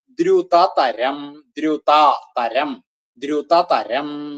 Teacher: ദ്രുതതരം, ദ്രു, ദ് ര് ഉ ആണ് ദ്രു. അത് ചെല്ലുമ്പോ ധ്രു എന്നായി പോവരുത് എന്ന് മാത്രം. ദ്രു അത്രേ ആവാവുള്ളൂ.